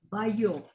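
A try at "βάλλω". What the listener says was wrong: Algo así, hermana. En el griego no tenemos la doble, la Y. Esa se va a leer, hermana, como una L. Vallo, vallo.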